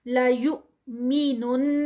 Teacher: لا یؤمنن، یا یہاں پہ یہ جو واو کے اوپر جو ہے وہ حمزہ ہے تو حمزہ جو ہے وہ اس پہ جزم آ گئی ہے. حمزہ پہ جب جزم آتی ہے تو حمزہ کی جو ساؤنڈ ہے ا ای او جو ہم نے پڑھی ہے وہ جرکی ساؤنڈ ہے، یعنی اس پہ تھوڑا سا جھٹکا لگتا ہے